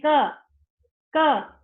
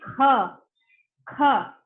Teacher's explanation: Maha means more. तो जो ख है वो महाप्राण है, क्योंकि वहां पे आप एनर्जी ज्यादा लगा रहे हो। कहा क है वो अल्प प्राण है, अल्प प्राण, कम एनर्जी लगा रहे हो।